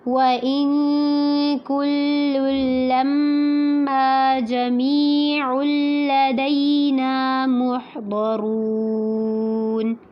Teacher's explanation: نا پہ مد اصلی کرنی ہے، لمبا کرنا ہے. محضرون میں ہا کو واضح کر کے پڑھنا ہے، ضاد اور را دونوں کو پر کرنا ہے، اور را کو پر کرنے کے ساتھ ساتھ اس کو لمبا بھی کرنا ہے۔